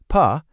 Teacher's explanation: To make a P sound, P. Do you feel how both of your lips come together to stop the air for a second? That's what we call a bilabial sound.